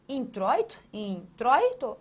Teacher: é um ditongo aberto oi